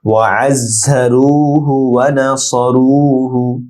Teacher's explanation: ওয়াআযযারুহু ওয়া নাসারুহু, ওয়াআযযা আইন ডিপ হবে, আইন জায়ের সাথে যুক্ত হবে, জায়ের উচ্চারণ জাজালো হবে , রু এক আলিফ লম্বা হবে, হু ছোট হা গুন্না নেই